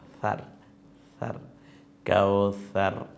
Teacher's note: সাটাকে colour করা হয়েছে কারণ হচ্ছে এটা নরম আওয়াজে জিব্বার আগা সামনের দাঁতের আগার সাথে মিলিয়ে